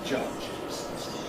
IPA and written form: ˈʤʌʤɪz (judges)